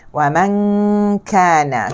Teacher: Ya, dia tidak terus masuk ke huruf kaf. Dia akan dengung dulu. Selepas selesai dengung barulah dia akan letakkan huruf di kaf. Hilanglah dengung dia itu.